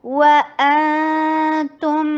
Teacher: واو ہونٹوں کی گولائی سے، حمزہ شدید، اخفا نون کا اور تا کی طرف جائے گی زبان ، تم، تا کے پر ضمہ، ہونٹوں کو گول کیجیے، میم